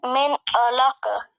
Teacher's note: in izhar we don't do gunna, nasalization · There will be no gunna over noon sakina where ayn is present after it.